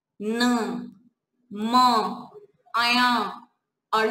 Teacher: मुंह के साथ साथ नाक से भी आवाज आती है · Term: अनुनासिक